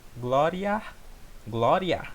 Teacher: Tá vendo que o A ele tem mais sonoridade do que o I?